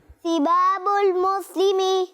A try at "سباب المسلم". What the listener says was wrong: ہاں یہ ثا نہیں، یہ سین ہے، اس لیے ہاں سین ادا کرتے ہوئے زبان دانتوں کے بیچ میں نہیں رکھتے.